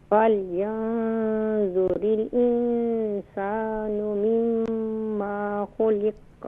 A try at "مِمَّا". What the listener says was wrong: ہاں، مما نہیں ہے، دیکھیں میم کے بعد سیکنڈ میم کے بعد الف نہیں ہے، یہاں پر شارٹ ساؤنڈ کریں گے